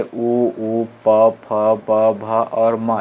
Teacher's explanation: उ, प, फ, ब, भ और म, इसका उच्चारण स्थान क्या है? ओंठ है।